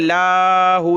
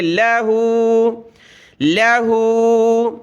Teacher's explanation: لام کو کھینچنا نہیں ہے, لاہو نہیں بلکہ لہو, لہو.